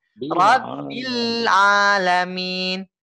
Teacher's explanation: Bilnya tekan dulu Pak ya. Jangan langsung dinaikin. Jangan langsung dioper ke huruf A-nya langsung.